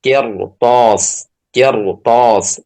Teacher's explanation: Maka ditebalkan ya ra yang sukun itu ketika setelahnya adalah huruf isti'la. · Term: ra-nya dibaca tebal